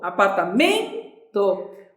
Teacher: Qual é a sílaba mais forte? É o men. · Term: paroxítona